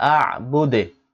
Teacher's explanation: টান দুনা এখানে এক আলিফ টান মা তিন আলিফ টান আ'বুদে দালে কলকলা করতে হবে সাকিন হয়েছে যেহেতু যদিও পেশ আছে কিন্তু ওয়াকফের আগে জবরজির পেশ সাকিন হয়ে যায়